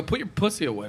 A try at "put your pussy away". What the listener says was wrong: You have a lot of emphasis on the S. Pussy. When someone says pussy, it's different than what you say. You're like pussy. Put your pussy away. That's how you say.